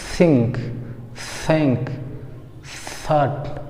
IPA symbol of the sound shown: θ